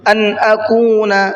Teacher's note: نون کو بالکل ظاہر کر کے پڑھا ہے، کیوں؟ اس لیے کہ نون ساکن کے بعد میں حمزہ ہے اور حمزہ اظہار کے حرفوں میں سے ہے، تو کیا کریں گے؟